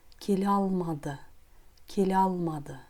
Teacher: В слове «келе» «е» опускается, сразу произносится звук «а».